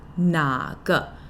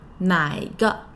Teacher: When you hear /na ge/, sometimes or actually often you'll hear /nai ge/